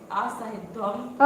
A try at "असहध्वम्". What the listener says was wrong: असहे क्यों बोले? सहध्वम।